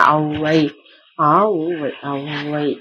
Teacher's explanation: அகர உகரம் அவுகாரம் ஆகும். அகரத்தையும் உகரத்தையும் கூட்டி ஒலிக்க அவை அவுகாரத்தை போல ஒலிக்கும். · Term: அவுகார போலி